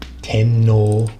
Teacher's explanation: This character here is normally read as o, but due to the n in front of it, it sort of becomes no to make it easier to say.